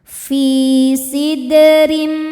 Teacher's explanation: Huruf ro dibaca secara tarqiq karena berharokat kasrah tanwin. Cara bacanya tipis.